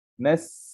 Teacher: Sin itu mati tapi dia masih mengalir angin dia. Masih mengalir desiran dia sehingga kita merasakan angin itu keluar di bawah mulut kita ni. Nas angin itu terkeluar, kita rasa di area sini ya. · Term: sin sukun